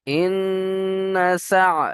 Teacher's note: আর এখানে নুনের উপরে তাসদীদ রয়েছে, অজীব গুণা, তাই আমরা প্রত্যেকেই এখানে গুণা করব। ইন্না সা, এখানে সিন আইন জাবার সা।